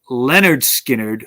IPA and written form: ˌlɛnərd ˈskɪnərd (Lynyrd Skynyrd)